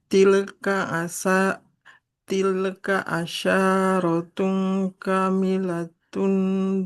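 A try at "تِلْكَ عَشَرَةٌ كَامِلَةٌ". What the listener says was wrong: Untuk panjang pendeknya hati-hati. pengucapan hurufnya. Huruf shin, asya. Tilka asyaratun kamilah. Nah, shinnya nggak boleh panjang. Fathah nggak ada alifnya. Tilka asyaratun kamilah. Masih panjang shinnya. Jangan asyaratun.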